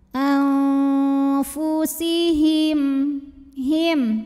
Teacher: nun sukun dibunyikan samar-samar siap-siap menuju fa disertai bunyi dengung. Dengung dan kesamarannya sama karena fa ini makhrajnya tidak terlalu dekat, tidak terlalu jauh dari nun. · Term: ikhfa awsat